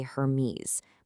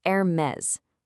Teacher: in French, the H is totally silent, and you actually do pronounce the S on the end